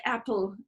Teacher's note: it might not be aspirated in a word like apple as it is in that unstressed syllable